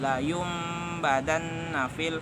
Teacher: Secara harfiah, iklab berarti menggantikan nun mati atau tanwin bertemu dengan huruf ba. Maka bacaan nun mati atau tanwin itu berubah menjadi bunyi mim. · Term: iqlab